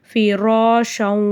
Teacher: சுக்குன் பெற்ற ராக்கு முன்னாடி ஜபர் இருக்கு அந்த ராவ நம்ம வல்லினமா ஓதணும் பிராஷவ்லயும் ரா மேல ஜபர் இருக்கறதுனால ராவை வல்லினமா ஓதணும்